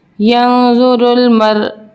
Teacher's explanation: وقف کی صورت میں حمزہ اومٹ ہو جائے گی اور یہاں ہلکا سا جھٹکا آئے گا